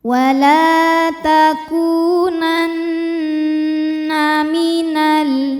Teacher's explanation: Cara membacanya adalah nun didengungkan, ditahan dengungannya kurang lebih 2 harokat ya. Jadi bunyi n tahan sampai ada suara masuk hidung. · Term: gunnah musyaddadah